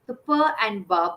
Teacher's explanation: the per and ba both are bilabial sounds